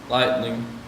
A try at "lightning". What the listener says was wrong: But don't trail off at the end.